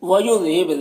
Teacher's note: با حروف قلقلہ میں سے با میں قلقلہ کرنا ہے